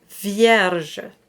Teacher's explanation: So the flip of the R is very light because you don't want to get in the way of your next syllable. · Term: very light R